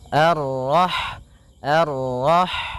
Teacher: sifat ha itu yang paling mencolok adalah sifat hamasnya yaitu mengalir Nya Nafas ketika kita membacanya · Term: hamesnya